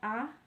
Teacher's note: Vokal netral, bibir tidak bulat dan tidak terbentang lebar